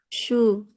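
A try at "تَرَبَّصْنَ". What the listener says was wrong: Jangan shu, su. Nah, huruf shad ini seharusnya walaupun kita belum bisa menebalkannya jadinya sin, jangan sya. Nah, ini kalau mau mau ditipiskan pun ya taruh basna bukan ya taruh basna. karena satu makronya dengan sin bukan ini ya shin ya.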